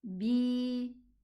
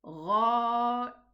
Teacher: So this is an elongating letter. So we are going to elongate the kasra. B. 2 counts like the alif.